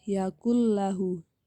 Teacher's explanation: bertemu dengan huruf lam dengan roh maka hukum bacaannya disebut dengan Idgham bilagunnah cara membacanya tidak ada dengungan